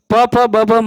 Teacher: प, फ, ब, भ, म का उच्चारण स्थान ओष्ठ से होता है। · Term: प वर्ग